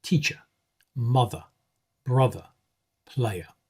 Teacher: It is the neutral, sort of unstressed vowel, the sound at the beginning of about or around. It's the sound at the end of words like teacher, mother, brother, player. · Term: the schwa